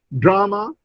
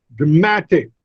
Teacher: the stress shifts from first to the second, dramatic.